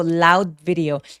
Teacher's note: 비디오 아니고 loud video 하면서 디귿 받침 처리하기